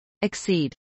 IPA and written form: ɪksˈiːd (exceed)